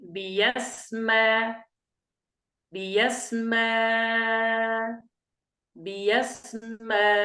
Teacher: قرأنا الأولى بالإبدال ياء مفتوحة بيا بيا، ثم الهمزة الأخيرة هذه أبدلناها ألفا وقرأنا بحركتين و4 حركات و6 حركات